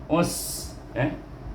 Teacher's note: Jadi mati dengan sin, us, ada bunyi angin, itu ma'al us.